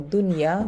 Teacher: Like for dunya, we don't say dunya, we have to pronounce the nun clearly, we make it idhar. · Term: idhar mutlaq